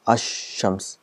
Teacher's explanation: the al is written, it becomes silent, and the sound of sheen is doubled. So it's ash-shams, so 2 times. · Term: silent lam